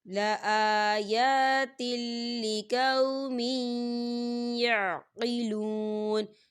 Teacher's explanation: اور تل تا کے نیچے تنوین ہے اور تنوین کے بعد لام آ رہا ہے اور لام جو ہے حروف یرملون میں سے ہے، تو یہاں پر ادغام ہوگا لیکن بنا غنّے کے